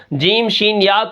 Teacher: ٹھیک ہے، آپ اگر جیم شین یا کو ادا کریں، آپ وہاں پر غور کریں تو دیکھیں جیم شین یا یہ آگے کی طرف سے زبان کی جو بیچ ہے یہ تالو کے آگے کی طرف سے نکل رہے ہیں۔